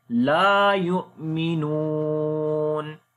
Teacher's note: Hamza is coming with sukun sign. We make jark sound here. Noon we long due to waw madda.